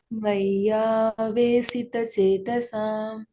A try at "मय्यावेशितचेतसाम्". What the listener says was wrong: So here on this yes here last line, yes, there is apostrophe. That means she. You have to pronounce as a she, like a she, shita. Maya veshi, not si.